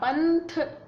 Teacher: पंथ आगे थ है तो इसका उच्चारण ना हो रहा है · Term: अनुस्वार